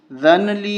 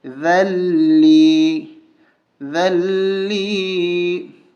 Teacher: ذال کو لام کے ساتھ ملائیں گے، نون کو چھوڑ دیں گے۔